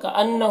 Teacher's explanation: نون مشدد ہے تو غنہ ہوگا، ہاں میں الٹا پیش ہے جو واو مدہ کی طرح ہوتا ہے تو اسے ایک الف کے برابر کھینچیں گے۔